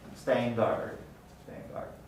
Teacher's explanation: but guard begins with a velar stop so you'll see that the nasal also undergoes place assimilation to become the same place of articulation as the following voiced dealer stop staying guard stand guard so